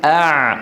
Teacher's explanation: لسان المزمار يعود الى الوراء فيتضيق الحلق يصير ضيق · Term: العين